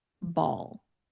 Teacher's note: Ball has that dark L sound